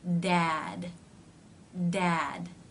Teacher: the teeth are not closing all the way but you're getting a d Sound by the Tongue coming up into position and pulling away stop consonants are sometimes pronounced without the second part without this